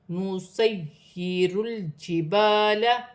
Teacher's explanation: یا مشدد ہے، جماؤں کے ساتھ ادا کیا جائے گا۔ · لام ساکن ہے، لام کو را کی حرکت کے ساتھ ملا کر پڑھا جائے گا۔ الف مدہ بن رہی ہے، ایک الف کی مقدار کھینچ کر پڑھا جائے گا